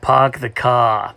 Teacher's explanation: the wealthy british started dropping the r sound as a class marker